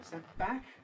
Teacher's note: You could also assimilate the whole business and say sent back, making it bilabial, but there's got to be a moment of voicelessness. There must be some voicelessness in the middle to indicate the presence of the T.